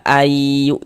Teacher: Bunyi nun sukun atau bunyi tanwinnya dimasukkan melebur dia ke dalam huruf idgham bi ghunahnya. Jadi dia masuk ke dalam huruf idgham ghunahnya. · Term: idgham bilhunah, idgham bi gunnah